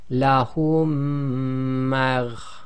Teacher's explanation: And essentially, instead of saying lahum, taking a pause and then saying maghfira, we now say lahum magh. So you're assimilating the two memes, effectively become one, and you're doing the ghunna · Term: assimilation